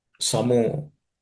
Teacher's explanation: Because the Visarga becomes U, it becomes Samo.